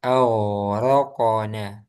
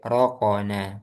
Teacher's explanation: Qaf itu tebal juga, jadi sukunnya ditebalkan.